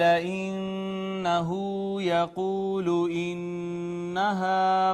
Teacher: الف حرف مدہ ہے، ما قبل اس کا مفتوح ہے، نون مشدد ہے، اس پہ ہم نے کیا غنہ